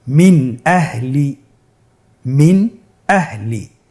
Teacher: আমরা জানি হামজা ইজহারের হরফ। তাহলে আমরা এখানে নুন সাকিনকে স্পষ্ট করে পড়ব, গুন্না ছাড়া পড়ব।